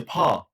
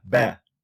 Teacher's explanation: So when I say p and b, 2 bilabial sounds, one of them is voiceless, does not involve vocal fold vibration. But it involves vocal fold vibration. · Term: voice onset time